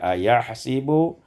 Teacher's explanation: ayahsabu kasrus sin dibaca kasrah sin menjadi ayahsibu